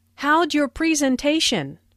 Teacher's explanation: Notice the contraction for How did sounds like /howdj/ and your sounds like /yer/.